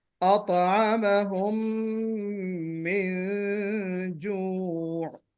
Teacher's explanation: अतअमहुम में गुन्ना नहीं हो सका है, गुन्ना करना है